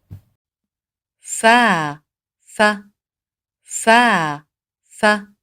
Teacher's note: اس کی ادائیگی اوپر کے سامنے والے 2 دانتوں کی نوک نچلے ہونٹ کے اندرونی گیلے حصے پر لگتی ہے